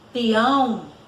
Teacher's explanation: vai dar esse som nasalizado, ou seja, o som vai sair pela boca e também pelo nariz